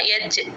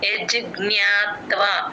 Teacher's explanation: అది జ అని జెడ్ సౌండ్ రాకూడదమ్మ యజ్ అంతే యజ్జ్ఞాత్వ జ్ఞ కి త ని జాయిన్ చేసి చెప్పాలి జ్ఞాత్వ